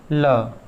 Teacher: निःश्वास वायु दोनों पार्श्वों से बाहर निकलती है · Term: पार्श्विक